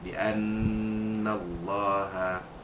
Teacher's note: lafzul jalalah dibaca tebal, kerana huruf kalimah sebelumnya berbaris di atas